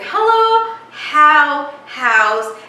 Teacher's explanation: It is just the sound of breathing, so it's not ha or h, it is just H sound, as in hello, how, house.